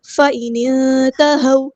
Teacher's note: نون ساکن کی آواز کو یہاں پہ چھپا دیں گے، اخفا ہو رہا ہے، اخفا کرتے ہوئے ایک الف یعنی 2 کاؤنٹ کے برابر رکنا ہے · نون کو ہم نے نون کے ساتھ ملا دینا، حمزۃ الوصل وہاں ڈراپ ہو جائے گا ، نون ساکن کی آواز کو یہاں پہ چھپا دیں گے،